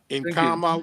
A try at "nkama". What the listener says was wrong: Be careful, brother. You don't read N. Sorry, you don't read N. N is there for your nasal. Kama. That's why you say Kama. You don't say Kama. You say Kama because of N. You don't read N. You don't read N Kama. No, Kama, please.